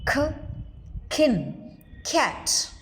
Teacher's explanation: K is aspirated when it comes initially as in k, kin, cat.